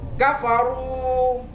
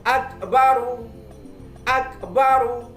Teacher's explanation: ini adalah huruf ro yang berharokat dhamma, maka wajib dibaca tafkhim atau tebal